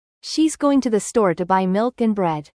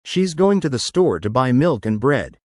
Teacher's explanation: Notice how the intonation rises slightly on milk, and then falls on bread.